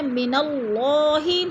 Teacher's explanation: اللہ سے پہلے لفظ نون کے اوپر زبر ہے تو ادھر اللہ کو پر کر کے پڑھیں گے، یعنی اللہ موٹا پڑھا جائے گا